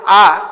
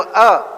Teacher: ಆ 2 ಇದೆ, ಅ ಮತ್ತು ಆ. ಬಾಯಿ ತೆರೆದು ಹೇಳುವ ಆ, ಬಾಯಿ ಮುಚ್ಚಿ ಹೇಳುವ ಅ